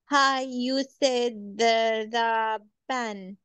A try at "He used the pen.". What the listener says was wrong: He, this is not hi. He used the pen.